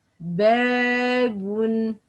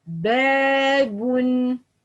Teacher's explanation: This ba letter is light letter. So the alif letter should be light. Okay, The sound of alif letter is followed by the fatha. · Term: alif mad